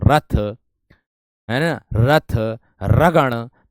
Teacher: आपकी जो जीभ की नोक है वो वायु से रगड़ खाकर कांपेगी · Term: लुंठित व्यंजन